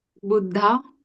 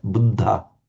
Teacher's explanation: it was a dental D doubled and with the little puff of breath